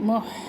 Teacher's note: हा को भी वस्ते हलक से निकाले